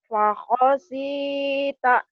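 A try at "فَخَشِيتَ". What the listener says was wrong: Shinnya jangan ngikutin Bu Rehan. Bu Rehan kan bibirnya memang kecil, jadi susah ngucapin shinnya dia. Kamu kan bibirnya nggak terlalu kecil. Fakhosita gitu. Shin.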